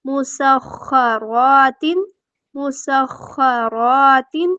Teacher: را پہ کیا ہو رہا ہے الف مدہ 2 حرکات ہم اس کو لمبا کریں گے